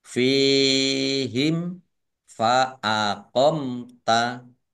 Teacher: fa aqomta fa kasrah Ya Sukun Mad thi'i panjang dua harakat mim sukun bertemu dengan huruf Fa bacaan izhar syafawi dibaca jelas